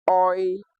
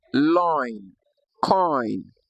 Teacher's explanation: Now the last div tongue we have here is a combination of the short o and the short e sound both coming together to produce what we call oi as in the word loin coin.